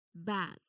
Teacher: You start with that firm lip closure, you add your voice, and then you pop the air out into the vowel sound.